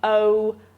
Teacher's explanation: So in SSBE, that's a diphthong